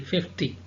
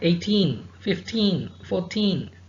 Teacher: if there are multiples of 10 like 20 30 40 50 stress on the first syllable